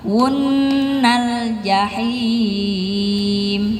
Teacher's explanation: Jadi diingat ada nun tasydid di situ, lamakan sedikit, tahan sedikit. Yang penting nggak kelamaan, nggak kecepatan.